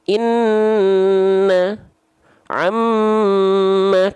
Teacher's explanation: nun dan mim dia ditahan 2 harokat ya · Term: Gunnah